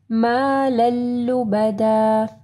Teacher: لام کو لام کے ساتھ ملانا ہے، ادغام آ رہا ہے